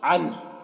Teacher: یہاں پر وقف کریں گے تو یہ پیش جزم سے بدل جائے گا ، عنہ، اس طرح سے ہا کی آواز نکلے گی، عنہ،